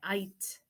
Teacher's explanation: neither G nor H say any sound at all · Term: long I